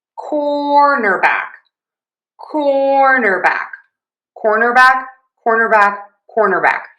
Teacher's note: Just remember, no W in there, but we have the same stress pattern, cornerback as quarterback. So again, to say cornerback, primary stress on core, unstressed in the middle, and then back gets some stress.